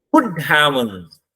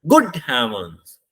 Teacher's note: गुड को जोर से बोलते हैं, हेवंस में आते हुए हमारी आवाज डाउन हो जाती है. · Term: फॉलिंग टोन